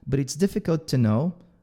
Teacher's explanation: Lembrando que esse to aqui também é bem fraquinho